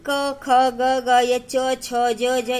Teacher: तब देखो इसमें क्या लिखा है, व्यंजन वे वर्ण हैं जो स्वरों के सहायता से बोला जाता है। प्रत्येक वर्ण का उच्चारण करते समय अंत में अ की ध्वनि निकलती है। जनरली अगर तुम एक एक अल्फाबेट वर्ण को लोगे तो अ का ही ध्वनि निकलेगा, अनटिल एंड अनलेस उसमें कोई मात्रा दिया हुआ है।